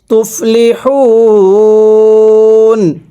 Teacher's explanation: ওয়াকফের সময় 3 আলিফ টেনে পড়ব।